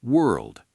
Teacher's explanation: 3 consonant sounds stacked right on top of each other at the very end